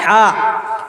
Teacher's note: وسط حلق کے بیچ سے ہا نکلتا